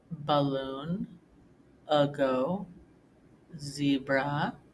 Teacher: this is a uh sound and it occurs any time when the letter a is not accented